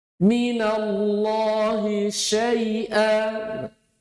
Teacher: Intishar, yaitu menyebarnya angin atau nafas. Anginnya menyebar dia ke seluruh anggota mulut. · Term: tafasyi